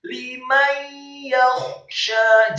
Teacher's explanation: Mimnya dibaca fathah 1 harokat, kemudian nun yang sukun bertemu dengan huruf ya. Hukum bacaannya adalah idgham bil gunnah, memasukkan dengan dengung atau dengan gunnah